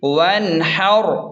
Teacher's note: وقف کی صورت میں آخری لفظ کا را ساکن ہو جائے گا اور اسے پر موٹا پڑھیں گے